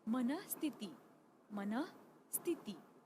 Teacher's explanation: विसर्ग का उच्चारण ह ऐसा होता है